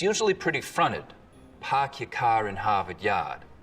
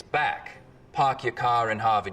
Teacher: in Boston it's usually pretty fronted